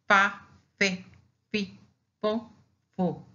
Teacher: this consonant is labiodental because to produce the the sound we use the teeth and the lip